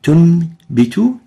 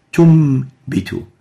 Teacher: we replace the noon with a meme. That's why the noon is given gray, because it will be not uttered, and it will be replaced by a meme with غنة. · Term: iqlab